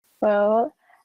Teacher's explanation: the candidate starting her answer with well, with a rising intonation, to show that she's starting an answer